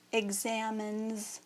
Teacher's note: the n is a voiced sound you use your voice to say so the s also becomes voiced which makes it say z